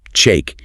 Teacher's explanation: use a sharp, desperate, high-pitched tone with a hard stop